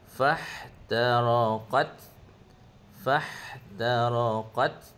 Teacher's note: pendekkan pada qad dia hanya satu harakat